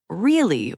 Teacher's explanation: Really with rising intonation means genuine surprise or doubt. Really with falling intonation means I agree or sarcasm.